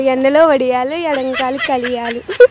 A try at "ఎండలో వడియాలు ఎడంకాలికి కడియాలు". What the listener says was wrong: కలియాలు కాదు, కడియాలు.